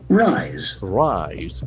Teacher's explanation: we can see that letter S has got Z sound. And the diphthong I is also present.